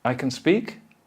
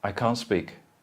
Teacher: If followed by a consonant, the T may easily disappear, and the only difference between the positive and the negative is a different, longer vowel sound in the second